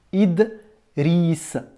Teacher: tu as la consonne, tu as le son D. Et tout de suite après, tu as une autre consonne. Tu as le R roulé.